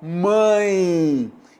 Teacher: Então esse E tem som de I, de semivogal I